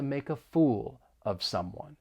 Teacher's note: there are a couple of phrases that we can link make a and fool of